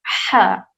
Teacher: ہا جب ادا کریں گے تو ہوا آواز کے ساتھ ساتھ ہوا بھی باہر آئے گی، اس طرح سے ہا.